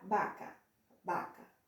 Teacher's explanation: Sempre o V vai ter som de B, mas é um leve som de B